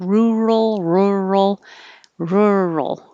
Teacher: weird rural rural your tongue is in the r position so my tongue's curled back the tip of the tongue is curled back and you hold it there as you say r and then moving from the r to the l is what